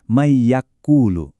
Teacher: Kalau nun mati atau tanwin ketemu salah satu dari empat huruf yan mu ini, itu artinya kita harus ngerem dikit. Suaranya wajib dilebur, ditahan, dan didengungkan selama kurang lebih dua harakat atau dua ketukan. Nah, konsistensi dua ketukan inilah yang mutlak banget harus kita jaga. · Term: Idgam bigunah